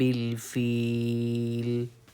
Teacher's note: فیل کو ہم کھینچ کے پڑھیں گے کیونکہ یہاں پہ یا مدہ کا قاعدہ ہے